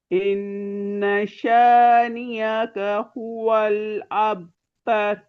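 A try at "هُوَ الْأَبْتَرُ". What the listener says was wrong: अबतर, अबतर। अच्छा, रॉ को मुफखम तर, ठीक है। रॉ जितने भी है ना, हाँ, रॉ की प्रैक्टिस आपने करनी है। आपने, मैंने और क्या मार्क किया था, इन्ना, ये पूरी मद नहीं बनाई आपने।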